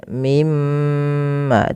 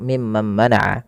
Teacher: ketika kita membaca mim tasydid ini, itu perlu ditahan suara gunnahnya ya, atau memahan suara mimnya.